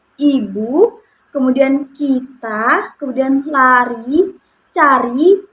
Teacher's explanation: vokal I ini posisi lidah itu berada di tinggi atas dengan menggunakan lidah bagian depan. Nah, kemudian posisi bibir pada saat mengucapkan I ini merupakan dalam posisi tertutup, begitu, tetapi tidak sepenuhnya tertutup, jadi masih terdapat celah, begitu, seperti I, begitu.